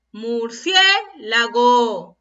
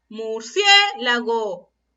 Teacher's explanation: ¿Dónde está la mayor fuerza de voz? En la sílaba cie.